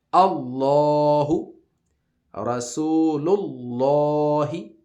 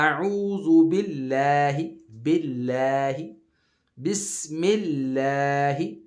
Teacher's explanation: جب نیچے والی حرکات ہوں اس سے پہلے والے حرف پہ تو اس کو باریک پڑھتے ہیں